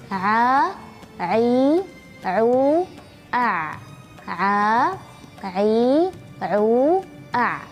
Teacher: makhraj wasatul halq wasatul halq itu adalah bagian tengah-tengah dari tenggorokan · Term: huruf Ain